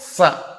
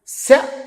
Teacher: సకారం దంత్యం శకారం తాలవ్యం రెండిటికి ఎంత తేడా ఉంది మరి అందువల్ల శ స ఈ రెండింటికీ ఎంత